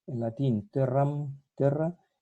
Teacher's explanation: La E tónica abierta se va a diptongar en Y.